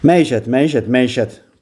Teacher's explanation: Vurğu üçüncü hecanın üzərindədir.